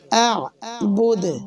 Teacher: হবে মোটা কলকলা করা যাবে না আ'বুদ এরকম পড়লে ভুল আ'বুদ আওয়াজটা নিচের দিকে নামবে প্রায় জেরের মতন শোনা যাবে